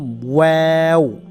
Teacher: এটার নাম হচ্ছে ওয়াও। প্রথমে ঠোঁট গোল করতে হবে, তারপরে সম্পূর্ণটা মেলতে হবে, তারপরে আবার গোল করতে হবে। ওয়াও, প্রথমে গোল করলাম, পরে পুরোটা মেলে ফেললাম, পরে আবার গোল করলাম, ওয়াও।